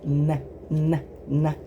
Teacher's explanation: With N, your lips don't touch at all. You make the sound by touching your tongue almost completely to the roof of your mouth in the front. N. And then when you release it, the noise travels and creates N.